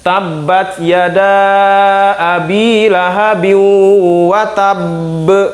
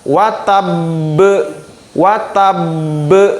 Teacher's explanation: Di atas ba ada tasydid, ini namanya qalqalah kubro atau qalqalah akbar. Kita tahan dulu ba-nya. Wa tabb, kemudian dilepaskan atau dipantulkan.